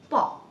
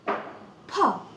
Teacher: But if I say like this way, P, this is right. Because when I say P, the paper is waving. That means it's been aspirated.